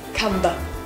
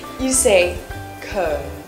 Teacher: actually the b sound in comb is a silent one